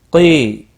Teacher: میم ساکن کے بعد صاد آیا ہے، اظہار شفوی ہوگا، صاد مستعلیہ بھی ہے، پر پڑا جائے گا، اس کے اوپر کھڑی زبر بھی ہے، ایک الف کے برابر کھینچ کر بھی پڑا جائے گا۔ قی، یا مدہ ہے، ایک الف کے برابر کھینچ کر پڑھیں گے اور وقف کی صورت میں نون ساکن پڑا جائے گا، وقف بالاسکان ہوگا، 3 سے 5 الف کے برابر کھینچ کر وقف ہوگا، مد العارض وقفی ہوگا۔